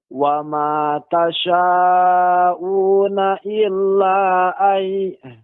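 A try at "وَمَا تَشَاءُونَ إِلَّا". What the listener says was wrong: Illanya kurang. Illa kira-kira 4 harokat. Namun beberapa catatan yang harus diperhatikan tadi diantaranya qaw, dengan cara dimonyongkan bibirnya agar waw itu pengucapannya lebih sempurna.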